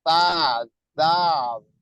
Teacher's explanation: huruf-huruf yang berasal dari ujung lidah bertemu dengan gigi seri atas